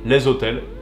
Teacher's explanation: on fait la liaison avec le S précédent